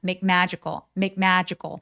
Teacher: 혀가 어딘가 닿는 소리와 또 다른 자음이 만났을 때 얘를 열심히 소리 내지 않고요. 그냥 받침처럼만 처리합니다. 이거를 전문 용어은 불파 여름이라고 하는데 자세하게 아실 필요는 없어요. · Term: 불파열음